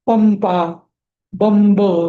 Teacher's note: म होतो अनुस्वाराचा उच्चार. हे समजलं की अनुस्वाराचा उच्चार एका शब्दामध्ये असेल तर त्याचा उच्चार हा पुढल्या अक्षरानुसार बदलतो.